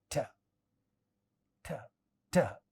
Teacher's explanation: tip of the tongue going straight, touching alveolar ridge and coming back is this sound, alveolar t